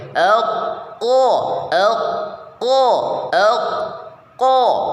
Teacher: posisi lidah bagian belakang naik ke langit-langit bersamaan dengan itu suara dikumpulkan di dalam mulut sehingga bunyi suara menjadi tebal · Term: istila